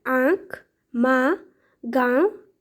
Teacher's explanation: अनुनासिक स्वरों के उच्चारण में मुंह से अधिक तथा नाक से बहुत कम सांस निकलती है। इन स्वरों पर चंद्र बिंदु का प्रयोग होता है, जो कि शिरोरेखा के ऊपर लगाया जाता है।